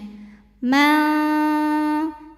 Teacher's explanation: Shin punya sifat tafashi, ada sebaran angin di mulut.